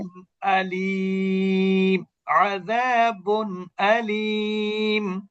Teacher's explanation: নুন সাকিন অথবা তানবিনের মধ্যে যে লুকায়িত নুন সাকিন আছে তার উচ্চারণটা স্পষ্ট হবে। যার কারণে গুন্না হবে না। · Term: ইজহার